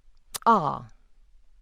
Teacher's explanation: The dental click is ah. You will notice that it has an affricated release.